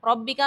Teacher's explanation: ربکا میں با کو مشدد جو ہے اس کو خوب جماؤں کے ساتھ پڑھیں گے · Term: با مشدد